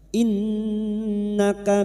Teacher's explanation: nun yang bertasdid guna musyaddadah kita dengungkan selama tiga harakat